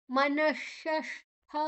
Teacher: ಮನ ಆದಕ್ಷಣ ವಿಸರ್ಗ ಇದೆ ಅದರ ಉಚ್ಚಾರಣೆ ಶ ಮುಂದಿನ ಅಕ್ಷರ ಶಿ ಅದು ಷಣ್ಮುಖಶ ಆದ್ದರಿಂದಾಗಿ ಮನಶಷ್ಠ ಶು ಮತ್ತೆ ಠ ಎರಡು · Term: ವಿಸರ್ಗದ ಉಚ್ಚಾರಣೆ